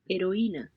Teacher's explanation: notice that they're not pronouncing the h it appears to be silent